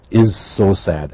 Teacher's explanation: we have a z and a s they are similar just the difference of voicing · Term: blended